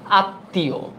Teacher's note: যুক্ত বর্ণটির উচ্চারণ সামান্য আনুনাসিক হয়